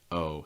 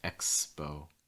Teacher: It's a diphthong. Start with your mouth wide, then close it, small round lips, front of your tongue down at the end, and it's going to be more frontal.